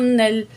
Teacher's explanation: नून की ज़बर को लाम तशदीद से जॉइंट करेंगे